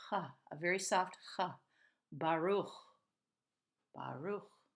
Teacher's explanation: It's not in the front of the mouth, it's really in the back of the throat. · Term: ch sound